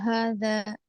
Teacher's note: हादा, हा में खड़ा जबर है, और हा का मखरज क्या है? हलक का आखिरी हिस्सा हादा, जाल का मखरज सही लेंगे, इसमें भी अलिफ मद्दा, दोनों में अलिफ मद्दा है।